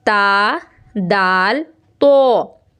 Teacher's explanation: जुबान की नोक को जब ऊपर के दांतों की जड़ों में टच करेंगे तो ता दाल और त अद बिल्कुल आसानी से अदा होगा · रूफे नित इया कहा जाता है ये इनका नाम है है जुबान की नोक और ऊपर के दांतों की जड़ से अदा होता है